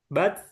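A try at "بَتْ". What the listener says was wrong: malah hilang ya. Ini kayaknya ini karena langsung ke hamesnya, belum ke makhraj ta-nya. Ya, jadinya langsung hilang gitu. Bat, nah bat dia kasih t dulu, bat baru kasih he gitu. Bat, Jadi kena makhrajnya dulu, kena belakang gigi sirinya dulu. Bat, baru kasih gitu. Bat, Mungkin karena ini apa bisa jadi posisi mulut juga nggak usah dikasih apa seperti kasroh ya.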